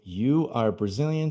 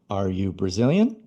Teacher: com entonação de pergunta e are antes de you